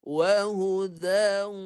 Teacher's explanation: Wahuda dawu, ada bunyi waw tu. Ada bunyi waw separuh lagi di hidung. Wahuda, bunyi waw pun ada, bunyi dengung ada. Tu kata dia bagi idgham naqis, bunyi dia sebahagian saja. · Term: idgham yang naqis